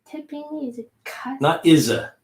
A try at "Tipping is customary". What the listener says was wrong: Gotta lose that habit of putting an A in between words.